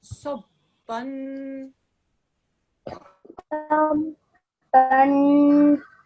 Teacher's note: Saad was said as a thick, heavy sound, rounded his mouth, and then the tanveen was pronounced for, okay, sabban, Sabban.